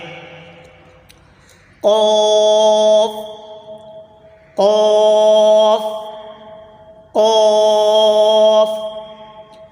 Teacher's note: قوف زبان کی جڑ اور تالو کے نرم حصے سے ادا ہوتا ہے۔